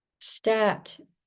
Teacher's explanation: The fricative s morphs into a plosive t, like gunfire, tongue behind the teeth, the open vowel cut off by a second round of gunfire.